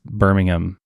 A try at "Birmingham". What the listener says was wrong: you don't pronounce the H like ham.